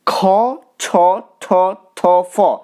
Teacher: একটু বেশি শ্বাসবায়ু লাগছে তাই এগুলো মহাপ্রাণ